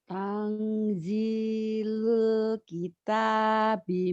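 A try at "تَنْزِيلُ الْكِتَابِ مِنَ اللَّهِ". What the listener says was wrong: Minau. Jangan kita bim, kita bi minau. Kalau kita bim minau ada tasdid.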